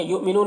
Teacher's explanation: यहाँ पर हमज़ा साकिना है, वाव की शक्ल में झटका लगेगा। नून में वक्फ करेंगे तो मद्द आरिज़ वक्फी होगा, तो इस तरह से पढ़ेंगे।